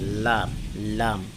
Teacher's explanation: 8 নম্বর মাখরাজ, জিহ্বার আগার কিনারা সামনের উপরের দাঁতের মাড়ির সঙ্গে লাগাইয়া